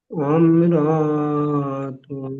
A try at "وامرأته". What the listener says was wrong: না আপনি ওয়াম র টান দিচ্ছেন, ওয়াম র টান হবে না। ওয়ামরাআতুহু বলেন।